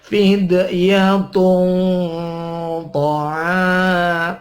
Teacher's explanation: tanwin ketemu ta dibaca ikhfa didengungkan